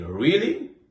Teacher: For example, if I say really in a flat voice, it sounds like I don't believe you. But if I say really with my voice going up at the end, it's a genuine question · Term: intonation